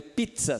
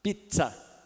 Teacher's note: só aparece o z mas fala d z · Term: africado